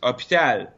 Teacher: we don't pronounce the H in French. So we just skip it.